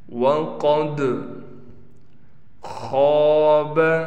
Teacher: خا کو پر کر کے پڑھنا ہے، خا کے بعد الف ہے اور خا پر زبر ہے، تو اس الف کی وجہ سے اس خا کو ہم کھینچیں گے